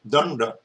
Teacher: The interesting thing about it is your tongue has to switch from dental to retroflex. Danda. So it jumps up.